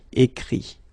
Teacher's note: phonetically this final T doesn't exist, okay? So the sound will be only this I